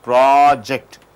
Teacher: when you stress the pro, it becomes project